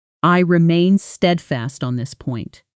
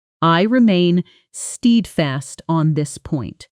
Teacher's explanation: Now with natural rising and falling intonation, stress falling hardest on steadfast.